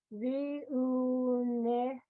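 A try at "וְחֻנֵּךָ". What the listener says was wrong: You have to have your chet over your ooh. So what does that sound like? Chu. It's a chet.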